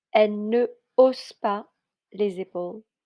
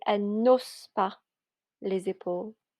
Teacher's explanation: with an aspired H, there isn't any liaison or elision.